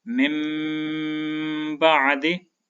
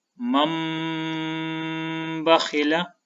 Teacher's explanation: अब इस मिसाल में आप देखें, यहाँ पर नून साकिन के बाद बा है तो हम नून की आवाज़ को मीम के साथ बदलकर गुन्ना करेंगे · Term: इक़लाब